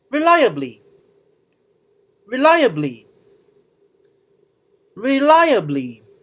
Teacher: the second syllable of this word is stressed